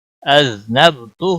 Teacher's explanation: ہا کے اوپر مد اصلی ہے الٹا پیش، اس کو ایک الف کے برابر کھینچ کر پڑھیں گے۔